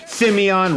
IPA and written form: ˈsɪmiən (Simeon)